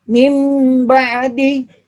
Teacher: Suara nun dan tanwinnya ba menjadi suara mim. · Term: iqlab